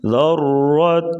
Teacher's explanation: را کے اوپر زبر، را کو موٹا پڑھیں گے،